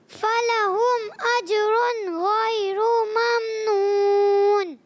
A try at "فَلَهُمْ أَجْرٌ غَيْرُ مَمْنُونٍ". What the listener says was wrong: غیرو کو کھینچنا نہیں ہے، دوبارہ بغیر کھینچے، غیر ممنون۔